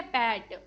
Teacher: पैट is made by briefly stopping the air with the lips and then releasing it. ठीक है, पैट, तो हमने यहाँ पे एयर को स्टॉप किया देन रिलीज करा। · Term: पी साउंड